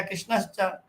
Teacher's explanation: परावर्ती तालु स्थानीय च होने से तालव्य स तालु स्थानीय आ गया